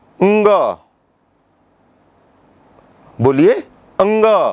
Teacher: जैसे देखिए, आप बोलिए अंग, बोलिए अंग, है ना। तो अंग जब हम बोल रहे हैं तो कंठ के साथ नासिका से भी हम ध्वनि निकलती है। अणो, इय, अंग, न, जब हम ये ऐसे कहते हैं तो जो उनका मूल उच्चारण स्थान है उसके साथ नासिका का भी प्रयोग होता है, इसलिए इनको अनुनासिक वर्ण कहते हैं।